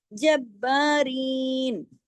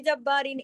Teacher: جب با سختی سے جوڑنا ہے کیوں کیونکہ با پہ تشدید ہے ڈبل با ہے جب پہلے با پڑھا گیا پھر جب با دو با پڑھا جائے گا.